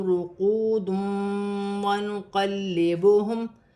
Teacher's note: دو پیش کی تنوین کے بعد پھر واو مشدد ہے، تنوین میں غنہ بھی کیا جائے گا، ملا کر بھی پڑھا جائے گا · واو ساکن سے پہلے پیش ہے تو واو مدہ بنے گی، ایک الف کی مقدار کھینچ کر پڑھا جائے گا